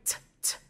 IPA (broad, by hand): t